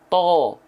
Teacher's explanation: Nggak ada hubungannya bunyi vokal O dihasilkan karena kita memonyongkan bibir. Bunyi vokal O yang terhasilkan yang asalnya A jadi O karena pangkal lidah kita diangkat. Ya. Maka ketika teman-teman melafalkan huruf to, jangan sampai bibirnya maju. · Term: isti'la